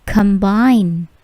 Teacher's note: Bunyi plosive di huruf K atau C di sini tidak terlalu besar.